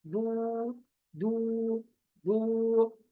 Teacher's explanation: वैसे भी पेश है तो मुंह गोल ही होगा क्योंकि पेश को पढ़ने के लिए हमारा मुंह वैसे भी गोल होता है। · मेरा मुंह गोल हो रहा है